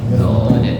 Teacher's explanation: Tepi lidah menyentuh gigi geraham bagian kiri ya, gigi geraham bagian kiri, maka keluarlah huruf dhad ya